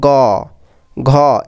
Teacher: গ লাস্টে স্বরে অ অনেকক্ষণ ধরে উচ্চারণ হচ্ছে, ঘ স্বরে অ অনেকক্ষণ ধরে উচ্চারণ হচ্ছে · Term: ঘোষ